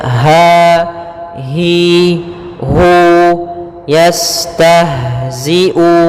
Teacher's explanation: huruf ha kita keluarkan dari pangkal tenggorokan kita pangkal tenggorokan · Kemudian dia sifat ha yaitu sifat rokhawah juga, dan dia makhrajnya huruf ha kita keluarkan dari pangkal tenggorokan kita